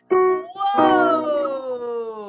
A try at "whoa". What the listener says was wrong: Now, if you could just make the whoa sound longer. Try that one again.